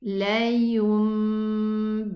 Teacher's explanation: The meme and the ba, they share the same exit. And we are pronouncing a meme and then a ba. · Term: qalb